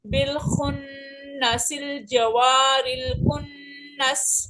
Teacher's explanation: دونوں نون مشدد ہیں دونوں پہ ہم نے غنہ کیا